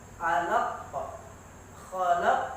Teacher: Perhatikan di sana ada qalqalah kubra. Jadi betul-betul huruf qafnya dipantulkan.